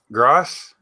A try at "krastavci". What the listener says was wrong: Kras, which is a K. Kras.